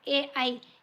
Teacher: ए आई हे जे स्वर आहेत ते कंठतालव्य वर्णामध्ये येतात